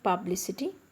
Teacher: for publicity the word is ending with i t y the stress is on the last but third syllable that is anti-penultimate syllable